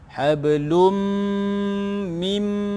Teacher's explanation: Okey, kemudian hablun, qala sughra, kalau qala sughra pasal dia di pertengahan ayat. Hablum, dengungkan tanwin bertemu mim, idgham ma'al gunnah